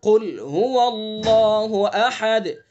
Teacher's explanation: قل قاف کو پر کر کے منہ بھر کے پڑھیں گے